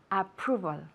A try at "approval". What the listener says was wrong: Very good. Excellent. ¿Habéis visto la V?